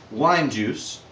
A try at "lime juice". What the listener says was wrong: That was lime juice. In case it sounded to you like it did to me, which sounded like wine juice. La la lime juice.